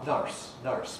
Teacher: In Scottish English we get nurse, which is just like cup you drink from, strut, plus an R, nurse, nurse, which is what the spelling suggests, nurse.